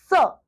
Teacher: सा बोलने में भी हर 100% आपकी हवा मुख से ऊष्मा के रूप में बाहर आती है। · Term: ऊष्म व्यंजन